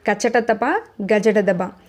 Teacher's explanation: చ జ అంటే కచటతప గజటదబ ఓకే ఈ వంటి అక్షరాలను తేలికగా పలుకుతాం ఇట్లా తేలికగా పలికే అక్షరాలని అల్ప ప్రాణాలు అని పిలుస్తారు.